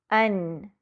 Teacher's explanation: نون کے مخرج کو واضح سمجھنے کے لیے نون کو ساکنہ کر کے اس سے پہلے حمزہ پر فتحہ لگا کر پڑھیں گے۔ ان، زبان کی نوک کو محسوس کریں کہ وہ اگلے دانتوں کے مسوڑے سے لگ رہی ہے اور وہاں سے آواز باہر نہیں نکل رہی بلکہ ناک سے باہر آتی ہوئی محسوس ہوتی ہے